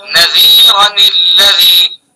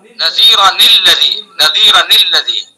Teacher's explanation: اگر حرف مدہ نہیں ہے تو اس کو کسرہ دے کر پڑھا جائے گا، یعنی اس کو زیر دیا جائے گا